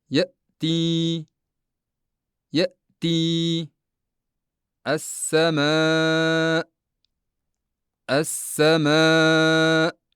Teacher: Shu bois bunday o'rinda ovoz paychalarini to'liq yopib, qalqala qilmay talaffuz qilish zarur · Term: hamza